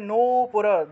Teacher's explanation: কালিম রত্ননিবদ্ধনূপুরলসৎ না, এই যে এটা দন্ত্য নয় নিচে দীর্ঘ উকার আছে, তাহলে নূপুর দন্ত্য নয়ে নূতে গিয়ে একটা টান দিতে হবে, দীর্ঘ টান